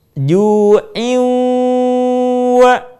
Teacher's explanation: Suara kita sebagiannya masuk ke rongga hidung. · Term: gunnah